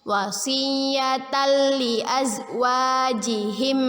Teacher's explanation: Tanwin bertemu dengan huruf lam, ya, idgham bila gunnah. Kita baca dengan memasukkan bacaan tanwin kepada huruf lam bila gunnah dengan tidak berdengung